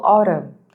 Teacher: the N in autumn is silent. We don't pronounce it. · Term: silent letters